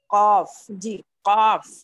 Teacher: अब आप कौफ पढ़ें और फील करें कि आपकी जबान की जड़ जो है ऊपर के तालु से लग रही है। कौफ जी लग रही है, ये पीछे का बिल्कुल हिस्सा मखरज बिल्कुल, हाँ ये मखरज बिल्कुल सही निकल रहा है, ठीक है।